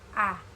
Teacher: vokal tengah, yakni vokal yang dihasilkan oleh gerakan lidah bagian tengah. Misalnya A, lidah bagian tengah, A.